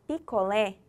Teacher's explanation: Se o lé é a última sílaba e é tônico, eu vou classificar como oxítona.